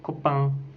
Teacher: C'est une voyelle antérieure mi-ouverte, étirée et nasale. On dit que c'est une voyelle nasale parce que l'air sort de la cavité nasale.